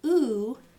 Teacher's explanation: So, you can describe E as a high front unrounded vowel. You can describe oo as a back high rounded vowel.